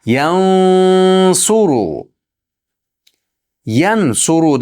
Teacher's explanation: Sodni harfini tagiga borib g'unnasi bo'ladi. G'unnasi tugagandan keyin sod harfiga bosamiz. Yansuru. Yansuru deb izhor qilmang, ixfo qilamiz.